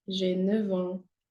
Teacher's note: For F, it'll be pronounced as a V.